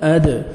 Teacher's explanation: दाल हरूफ क़लक़ला में से है, डबल साउंड आएगा